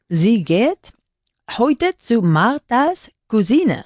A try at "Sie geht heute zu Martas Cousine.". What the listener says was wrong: Perfecto, fantastisch.